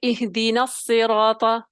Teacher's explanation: میں نے نون کو ڈائریکٹ جو ہے صاد سے ملا دیا اور کوئی الف نہیں پڑا گیا بیچ میں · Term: حمزہ